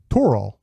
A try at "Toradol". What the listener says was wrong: Toradol. There's a D in there.